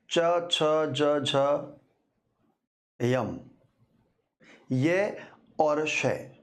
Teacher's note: हमारी जीभ तालु को स्पर्श करती है। च छ ज झ यम य और श ये तालव्य होते हैं।